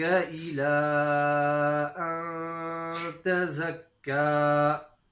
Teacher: So you've got a noon sakin followed by a ta, which is a non-throat letter. So we're going to make the ikhfa slight nasal sound.